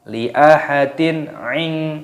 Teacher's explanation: kasrah tanwin bertemu dengan ain, ini dibaca jelas, jangan dibaca berdengung, tidak boleh. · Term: idhar halqi